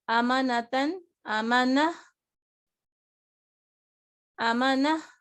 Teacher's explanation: تا وقف کر دیا ہم نے تنوین کے ساتھ اور ہا پڑھی